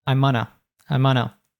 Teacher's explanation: Oftentimes gonna will reduce to 'unna. So he says, I, instead of saying I'm going to, he says, I'munna, I'munna.